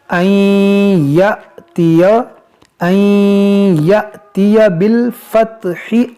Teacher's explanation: यहाँ पर देखें ये जो अलिफ है ये अलिफ नहीं, ये हमज़ा है और ये हमज़ा साकिना है, तो इसको झटका देकर पढ़ेंगे